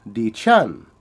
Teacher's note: the woman says D Chan which is a low and a high tone